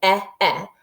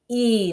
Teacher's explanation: they're going to make a long E sound. So they're not going to say two short sounds. It's not going to say eh, eh.